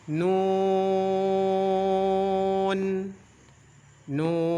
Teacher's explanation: apabila kita membacanya dalam keadaan wakaf maka dipanjangkan sampai enam harakat contoh [Musik] nun Nun dipanjangkan sampai en harakat mad ini disebut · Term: mad lazim